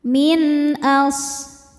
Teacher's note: Min as shadnya berdesis ya. Salah satu sifat huruf shad yang tidak memiliki lawan adalah shofir yaitu ada desisan seperti suara angsa. · Selanjutnya ada izhar halqi. Karena nun sukun bertemu dengan huruf halqi atau tenggorokan yaitu hamzah. Cara bacanya nun sukun dibaca dengan jelas. Min as shadnya berdesis ya. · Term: sofir